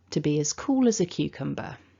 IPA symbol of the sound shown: ə